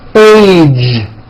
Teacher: It's not H, it's age with a voiced ending.